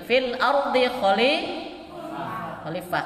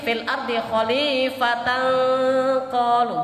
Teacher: Kalau berhenti kita baca ha, kalau diterusin kita ta. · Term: takmar butoh